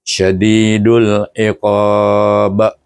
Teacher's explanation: Jadi apabila huruf mad bertemu dengan sukun yang mendatang atau memang sukun asli hendaklah dibaca dengan ma'rid sukun. Oleh kerana huruf yang terakhir itu adalah huruf qalqalah maka apabila disukunkan dia akan melantun. Jadi kita baca dengan qalqalah kubra.